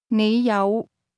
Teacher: The word have is pronounced with a low, rising tone.